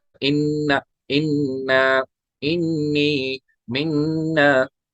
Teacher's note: दो मुशद्दद हरूफ है, एक मीम मुशद्दद और नून मुशद्दद, उनमें गुन्ना होगा। नून पे तशदीद होगी, मीम पे तशदीद होगी, उनमें गुन्ना होगा।